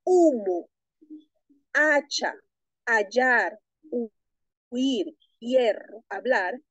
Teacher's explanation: es el mantenimiento de la H aspirada, pronunciada como J